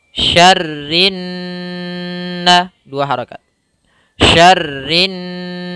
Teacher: nunnya maka Gun kita namakan dengan guna nnya cara membacanya adalah tidak langsung syarrin naas tapi ditahan suara n-nya